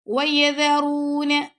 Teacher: ذال کو نرمی سے پڑھیں اور را کو ہم نے پر کر کے پڑھنا ہے